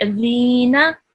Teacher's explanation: your tongue should touch the tip of your teeth, and it should come out a little bit